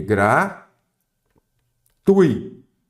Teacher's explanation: eu tenho um ditongo eu não tenho um iato